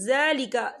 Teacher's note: زال کے اوپر کڑی حرکات ہے تو ہم اسے 2 یا 3 حرکت کے برابر کھینچ کے پڑھیں گے